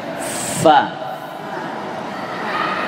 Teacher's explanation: fa, perut bibir bawah dengan gigi atas.